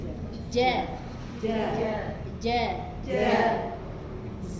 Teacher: Cuman tengah lidahnya itu agak maju sedikit dan ditempelkan ke langit-langit. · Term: Jim